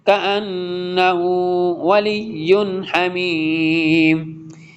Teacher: یہاں پہ نون مشدد وید غنہ ریڈ کریں گے